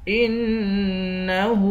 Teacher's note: حمزے کو نون سے ملا کر نون پر غنہ کریں گے، ہاں پہ الٹا پیش ہے، اس کو ایک الف کی مقدار کھینچیں گے۔